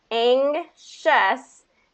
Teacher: And so the G, and this is an interesting kind of transition because we're getting all the way from the back of the throat all the way to the front with that SH.